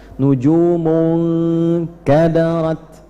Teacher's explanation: nunnya langsung masuk ke huruf kaf, ke tempatnya makhrajnya kaf. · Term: ikhfa